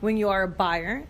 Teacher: for intonation notice how she really punches the word buyer